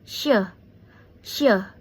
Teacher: she is a fricative palato alveolar voiceless and is a fricative alveolar voice this cont change meaning completely ship coupal weather vision pandangan rest ruam weather garage garasi explanation number nine le re le re re load road load road P le versus R.